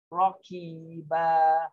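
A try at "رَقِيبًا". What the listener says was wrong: Roki, jangan roki. Rokiba. Dia huruf qaf kan?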